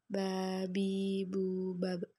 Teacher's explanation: Ketika huruf Ba dalam posisi mati, suara terdengar mantul bab.